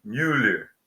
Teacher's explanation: pronunciado com os lábios arredondados como se fosse meio meio francês